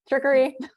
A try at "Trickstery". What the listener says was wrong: Oh, there's an S in there.